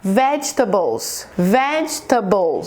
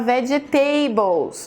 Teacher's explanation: Você vê que a primeira sílaba é a mais forte? Em português, pessoas que falam português têm uma tendência a falar vegetables, porque a gente tenta colocar nessa palavra a mesma pronúncia do português. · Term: sílabas fortes